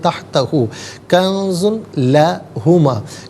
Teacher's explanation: نون ساکن کو اخفا کے ساتھ پڑھیں گے۔ اخفا کہتے ہیں ناک میں آواز لے جا کر گنگنانا۔ کنز میں زا پر دو پیش کی تنوین ہے، اس سے لا جو لا ہے لام ہے اس کے ساتھ ملائیں گے، لام کی آواز کو ادا کیا جائے گا۔